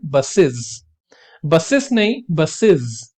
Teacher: The es ending of plural verb is also pronounced like z in the word buses. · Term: z की आवाज